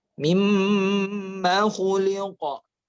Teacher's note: Falyanzuril insanu mimma khuliqa. Nah, mimma ma-nya nggak panjang. Yang panjang itu gunnahnya.